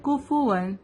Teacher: حمزہ ہے، حروف حلقی ہے. اظہار کا قاعدہ ہے تو ہم یہاں پہ تنوین کو نون کو ہم ظاہر کریں گے